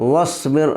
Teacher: را ساکن سے پہلے با کے نیچے زیر ہے اس لیے را باریک پڑھی جائے گی